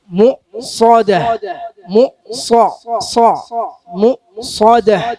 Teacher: സ കനപ്പിക്കണം, സ കനപ്പിക്കണം. നാവിന്റെ പിൻഭാഗം മേലോട്ട് ഉയർത്തുക.